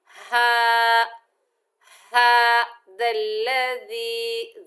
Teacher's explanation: हा को भारी साउंड से अदा करेंगे और खड़ा जबर जो है इसे एक अलिफ की मिकदार खींच कर पढ़ेंगे